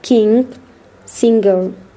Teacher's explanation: The voiced velar nasal sounds. The sound. In English, it is pronounced in words like king, singer.